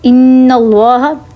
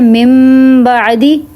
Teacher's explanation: ایک غنہ میں جو ہے زبان تالو پہ لگتی ہے اور ایک میں دونوں ہونٹ ملتے ہیں